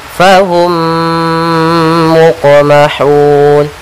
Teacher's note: mim yang pertama masuk kepada mim yang kedua, kita tahan gunnahnya. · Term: idgham mimi